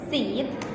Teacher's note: For example, when you say vowel sounds E, as in the word seat, is front vowel sounds because your tongue is positioned on the front of the mouth